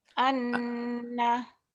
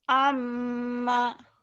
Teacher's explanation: Nun dan mim ini bukan hanya double sebetulnya. Harus ditahan, harus panjang. Ya ditahan dua harokat tuh. Dan ada dengungnya tuh bedanya. Iya. Sementara huruf yang lain cuma double saja.